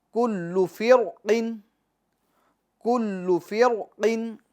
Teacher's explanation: फ़िरक़िन की जो रा है, इस रा को हम क्या करेंगे, पूर पढ़ेंगे · ये कुल्लू में जो लाम है, इस लाम को हम क्या करेंगे, पूर पढ़ेंगे या बारीक पढ़ेंगे, बारीक पढ़ेंगे। क्यों बारीक पढ़ेंगे, क्योंकि ये लफ्ज़ अल्लाह का लाम नहीं है, और लफ्ज़ अल्लाह के लाम के अलावा जो भी लाम है, चाहे वो किसी भी हालत में हो, उनको हम हमेशा बारीक पढ़ेंगे।